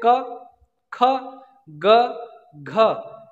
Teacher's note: आप अपने कंठ पे हाथ रखिए, बोलिए क, ख, ग, घ, यानी कंठ से आवाज आ रही है